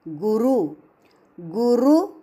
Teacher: रू पर हल्का सा आघात और रू ह्रस्व बोलना